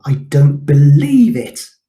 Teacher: a volume that emphasizes the word believe